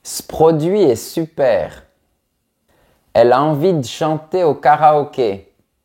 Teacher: avec les petit mot qui se termine par la lettre E très souvent on prononce pas le E